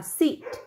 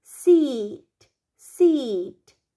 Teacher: Cái từ seat nó sẽ giúp con phân biệt với từ sit y ngắn nhé. Bởi vì nếu như nguyên âm y ngắn con đọc là sit, tức là ngồi ấy, thì cái từ seat, seat, con kéo dài âm y này ra